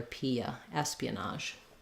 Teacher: there can be a little gliding uh sound as we move from the e to the uh we just naturally Glide between those two you won't see them